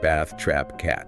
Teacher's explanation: It's the exact same vowel you hear in the word cat or trap. Your mouth spreads wide and the tongue is relatively flat. >> Right. Like bath, trap, cat. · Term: short flat a sound